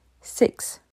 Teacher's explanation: le i court en anglais c'est un mi-chemin entre un I et un e